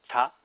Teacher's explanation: the sounds are all made at the teeth so with the tip of the tongue at the back of the teeth